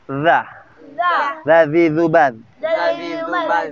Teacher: Dzal ujungnya lidahnya bertemu ujung gigi seri atas. Boleh dikeluarin sedikit.